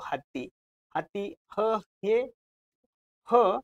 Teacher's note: ह चा उच्चार कशामधून येतो? तो कंठामधून येतो